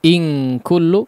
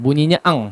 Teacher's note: Ya, diperhatikan coba in kullu. Ya, ikhfa di sini langsung bunyinya ang saja, ya, ditempelkan langsung pada makhraj kafnya.